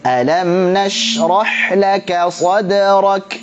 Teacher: alam ngalir sedikit, nash ngalirnya banyak, rah ngalirnya banyak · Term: rakhwa